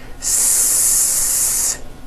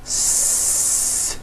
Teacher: The S consonant, made with air going through your front teeth.